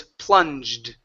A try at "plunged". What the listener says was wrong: Give me the D sound at the end.